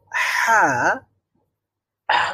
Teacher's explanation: তো হলক মানে হচ্ছে গলা বা কণ্ঠনালী, কণ্ঠনালীর মধ্যভাগ থেকে হা উচ্চারণ করতে হয়। আর হা উচ্চারণ করার সময় একটু স্ট্রেস তৈরি করতে হয়, একটু চাপ দিতে হয়, গলার মধ্যে একটু চাপ দিতে হয়। আর এই চাপটা অবশ্যই হাত দিয়ে নয়, এটা গলা দিয়েই দিতে হয়।